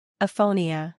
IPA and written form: eɪˈfoʊ ni ə (Aphonia)